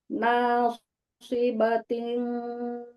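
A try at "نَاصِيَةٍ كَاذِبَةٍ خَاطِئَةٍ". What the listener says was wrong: Alah, jangan nasi bating. Ibu tadi pakai nasi bating terus. Nausiatin.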